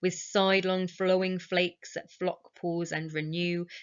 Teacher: So again, we get this sibilance, shudders, snow, sidelong flakes. We get the soft fricative Fs coming in